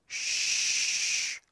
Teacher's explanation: And so when we make this sound, shh, we can feel that the blade of our tongue is almost touching the hard palate, or the palatal area of our mouth